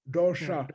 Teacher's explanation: One is retroflex. Yeah, dosha with your tongue turned back